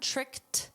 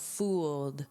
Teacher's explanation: notice with tricked, it's a soft T sound, tricked, but this is a soft D sound, fooled, and deceived.